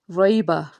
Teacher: را کو پر پڑھیں گے کیونکہ اس کے اوپر زبر ہے